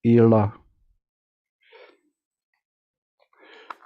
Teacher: It is a retroflex consonant found only in Vedas. It is an alternate version of D when it appears between 2 vowels, in this case ila. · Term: retroflex L